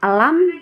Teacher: bunyi huruf lam keluar dengan menggerakkan semua lidah dan bertemu dengan ujung langit-langit